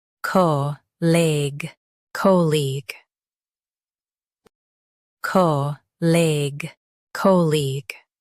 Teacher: Stress co and keep eague light.